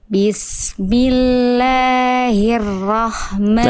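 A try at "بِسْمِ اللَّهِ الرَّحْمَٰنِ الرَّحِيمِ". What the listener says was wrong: Nah, hati-hati huruf rnya jangan sampai kadar ee tasdidnya ber Heeh.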